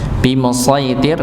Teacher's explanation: huruf sa-nya ditebalkan, nih masuk kepada huruf ya, sama tidak dipanjangkan